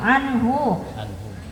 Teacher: anhu ketemu huruf h, hukumnya idhar, dibaca jelas. Jangan karena nun mati dengung jadi anhu maluhu wa ma kasab.